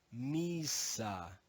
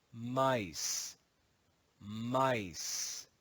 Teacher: in Modern English the long e sound changes to I and the final schwa is silent